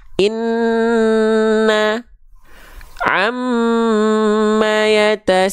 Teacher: Nun dan mim dari dengungnya itu ditahan 2 harokat. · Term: gunnah